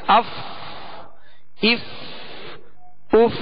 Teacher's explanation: اور فا کا جو مخرج ہے یہ مخرج ہی پر آواز ختم ہوتی ہے